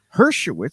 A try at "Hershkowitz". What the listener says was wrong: Yeah, you always forget the K.